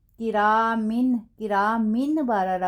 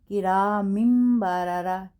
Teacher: اگر نون ساکن یا تنوین کے بعد با آئے گا تو پھر ہم اس تنوین کو اور نون کو میم کے ساتھ بدل کر ادا کریں گے غنہ کے ساتھ. اب یہاں دیکھیں کرامن بارارا بنتا ہے نا، لیکن ہم کیا بولیں گے کرامم بارارا. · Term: اقلاب